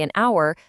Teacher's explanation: we say an hour because the h is silent. So, it starts with an vowel sound.